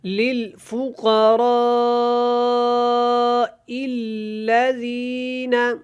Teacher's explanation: تو یہاں دیکھیں للفقراء الذین، یہاں پہ آپ نے دیکھنا ہے، یہاں پہ مد ہے، مد متصل ہے، اس کو آپ نے کھینچنا ہے اور لمبا کر کے ادا کرنا ہے